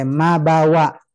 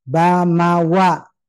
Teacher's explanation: dia keluar dari dua bibir mim dan ba dirapatkan bibirnya dan rapat yang kuat itu untuk ba sementara Ma lembut